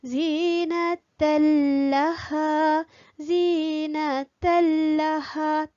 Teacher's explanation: Tak dengung, tapi lam tu kita masukkan. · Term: idgham bila gunnah